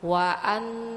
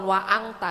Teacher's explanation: Jadi Ibu masukkan huruf nun kepada huruf ta-nya. Waan, jadi bukan waang ta ya Bu. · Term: ikhfa